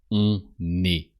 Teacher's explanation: On est. So you pronounce the N of on because the following word starts with a vowel